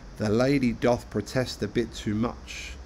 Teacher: in each foot it is the second syllable which is stressed